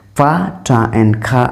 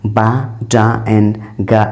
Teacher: Pa, ta and ka are named as the voiceless plosives, whereas ba, da and ga are named as voiced plosives. If a sound is called voiceless, it means the vocal cords stop use voicing, and the voiced plosive means the vocal cords deep its voice.